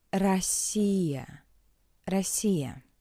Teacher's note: The pronunciation is weak and shorter in an unstressed position. In an unstressed position, the letter O is read as a weak A.